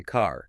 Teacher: the back of your tongue needs to be quite low, maybe a little retracted to get that darker R color